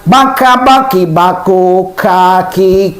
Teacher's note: Kap pangkal lidah. Pangkal lidah dekat dengan makhraj qof.